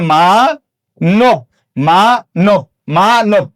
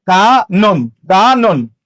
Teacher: মধ্য অ এর আগে আকার থাকলে সেই মধ্য অ এর উচ্চারণ ও এর মতো হবে।